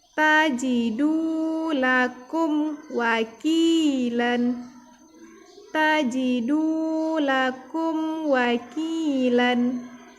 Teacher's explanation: di sini dalnya berbaris dhammah, kita baca du, dibaca panjang karena ada waw sukun